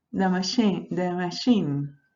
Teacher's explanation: Y entonces yo, las demás no tengo que decir nada, solamente poner la lengua en schwa y la última sí le voy a pronunciar con una I, que es la anterior cerrada, no redondeada